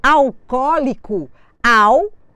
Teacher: só que quando eu escrevo alcoólico alcoólico eu tenho cinco sílabas eu só posso acentuar até a anti penúltima alcoólico o meu acento será no segundo o da palavra o meu au se transformou numa subtônica ele não é mais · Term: acento tônico